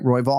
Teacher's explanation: we're just looking for that first syllable to be emphasized